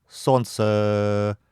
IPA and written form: ˈsont͡sɘ (солнце)